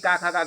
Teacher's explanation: ये का, खा, का, घा यानी कंठ के अंतर्गत आता है